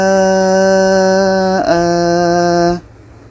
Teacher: Hamzah berbaris tanwin atas, maka ini mad iwad. Cara bacanya kita panjangkan 2 harkat.